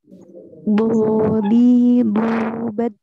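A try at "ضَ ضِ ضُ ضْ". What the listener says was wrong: Nah, nyasar ke huruf dal. Ini Dodi jadi begitu ya.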